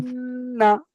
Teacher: আওয়াজকে নাকে ধরে রাখতে হবে কিছুক্ষণ। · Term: গুন্না